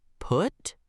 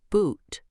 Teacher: Uh is short and relaxed. Ooh is long and tense.